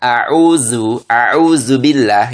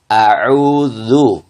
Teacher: ujung lidah bertemu dengan ujung gigi depan yang atas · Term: huruf dalal